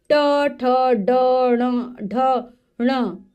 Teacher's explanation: ट वर्ग, टवर्ग मूर्धा, मूर्धा है इनका उच्चारण स्थान, यानी कि जब हम इनको बोलते हैं तो हमारी जीभ, दांतों का जो ऊपर वाला भाग है उसको मूर्धा कहा जाता है, वहां से बोले जाते हैं, वहां से स्पर्श होती है। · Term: मूर्धन्य व्यंजन